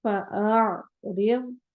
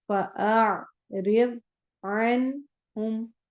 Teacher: عین حروف حلقی میں سے ہے، پہلے حمزہ کی آواز آئے گی پھر عین کی آئے گی۔ آ بولنا ہے، پھر آگے عین سے ملانا ہے۔